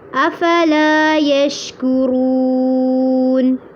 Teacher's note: لام کو لمبا کرنا ہے، شین پہ آواز کو چلانا ہے، کاف کو باریک کر کے پڑھنا ہے اور رو کو پر بھی کرنا ہے اور لمبا بھی کرنا ہے